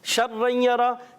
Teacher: شین کی ادائیگی جب بھی کرتے ہیں منہ میں آواز پھیل جاتی ہے